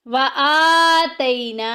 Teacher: آ کے اوپر دیکھیں کھڑی زبر آ گئی، ایک الف کے برابر لمبا کریں گے